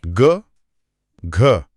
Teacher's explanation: गले में जो हल्का सा कंपन है उसके साथ-साथ हवा का फ्लो भी ज्यादा है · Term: महाप्राण